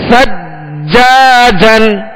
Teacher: جیم پر تشدید ہے, جیم حروف قلقلہ میں سے لہذا خوب جمع ہوگا